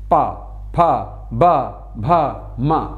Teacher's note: इसलिए पा वर्ग का प्रत्येक वर्ण पा फ ब भ म, प्रत्येक वर्ण देखिए दोनों होठों को स्पर्श करने से ही उच्चारण निकलेगा